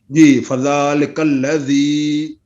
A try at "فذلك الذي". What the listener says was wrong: وچ جی ہے نہیں، اس کے اندر جی نہیں ہے، صرف لفظ بولیں فذلك الذي